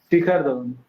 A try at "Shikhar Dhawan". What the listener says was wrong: A little bit. The H should be a little bit prominent. Shikhar. Sha.